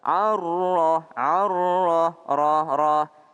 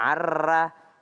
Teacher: Ada huruf ro. Kalau dia baris fathah maka dia tebal.